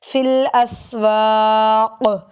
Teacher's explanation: وقالوا ما لہذا الرسول یأکل الطعام ویمشی فی الاسواق۔ جب وقف کریں گے تو یہاں قاف پہ کلکلہ ہوگا